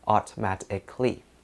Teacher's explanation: Remember that the O in this word is unstressed, and so we drop it.